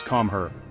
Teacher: The K is softer, the R is often a light roll or tap, and the intonation is likely to have a friendly upward lilt. It sounds more like an invitation than a command.